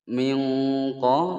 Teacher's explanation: nun sukun bertemu qaf disamarkan dan didengungkan selama dua ketukan. Hukum bacaan ikhfa.